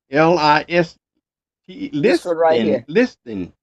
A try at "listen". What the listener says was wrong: We don't We don't We don't pronounce the T. We say listen.